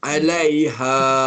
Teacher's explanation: Kalau awak berhenti alaiha, awak baca 2 harakat saja.